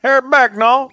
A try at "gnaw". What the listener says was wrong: No, you said nout. With too much pronunciation on it.